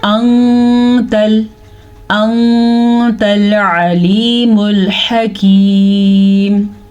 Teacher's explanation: ایسا تب ہوتا ہے جب نون ساکن کے بعد والا حرف یا تنوین کے بعد والا حرف حروف اخفا میں سے ہو جائے تو پھر ہم نون کی آواز کو مکمل ادا کیے بغیر چھپا کے پڑھتے ہیں اور غنے کے ساتھ پڑھتے ہیں